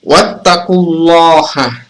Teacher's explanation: Jadi dhammah fathah sebelum kata lafaz Allah, maka itu dibaca tebal. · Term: tafkhim